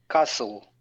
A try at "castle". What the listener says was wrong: That's it.